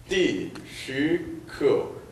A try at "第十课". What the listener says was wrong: 좋습니다. 다시 한번.